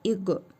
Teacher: qaf hərfinin üzərində cəzm var. Qalqalə edərək oxuyuruq.